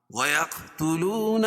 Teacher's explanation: قاف پر قلقلہ کیونکہ یہ حروف قلقلہ کے 5 حرفوں میں سے جب بھی ان پر جزم ہوگا وہاں قلقلہ ہوگا، وصل اور وقف دونوں صورتوں میں.